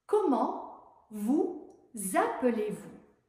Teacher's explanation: on fait la liaison entre vous et appeler. On prononce un Z.